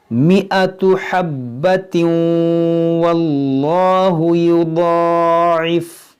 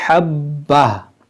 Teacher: इस तरह से फिर मिलाकर पढ़ेंगे तो हब्बतिन, और रुकेंगे तो हब्बा।